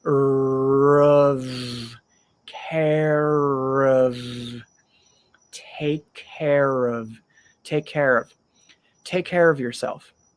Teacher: Take care. And then of, we have the R in care. So we connect that to the of.